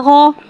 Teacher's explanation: आइन हुर्फ़ मुस्तालिया है, लिहाजा इसकी आवाज़ हलक से मोटी अदा होगी।